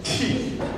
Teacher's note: l'aspirazione viene annotata con questo apostrofo, quindi è ci, come se fosse una piccola H